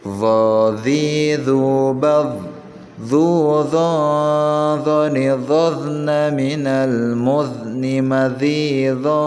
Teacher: Yang terakhir ada huruf zo, bukan zo ya, tapi bukan z a, tapi zo, d z a ya. Zo itu ditekankan ke ujung giginya, zo ya, ujung gigi seri bagian depan.